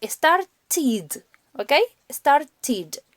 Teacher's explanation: como start termina en t, pronuncio la ed como id.